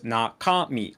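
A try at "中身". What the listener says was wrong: See, I would have said nakami. Nakami. You're hitting, for me, you're hitting the cow way too hard. Nakami.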